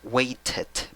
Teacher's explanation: Puedes decir waited porque tienes vocales entre las dos. O sea, la T está entre dos vocales. Puedes pronunciarlo como una R.